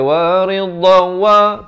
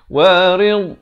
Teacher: Tak ada pantulan. Dha bukan huruf qalqalah.